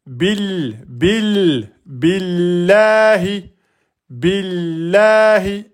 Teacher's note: On avait le nom d'Allah qui est précédé par une lettre qui porte Kassra. Donc on va prononcer le nom d'Allah en aminci. On va pas dire maisah le nom d'Allah.